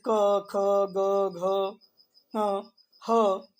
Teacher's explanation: अ और जो क वर्ग होता है, यानी क ख ग घ और ङ और ह और विसर्ग, ये सब कंठ से बोले जाते हैं। आप बोल करके देख लिया करें, समझ में आ जाएगा।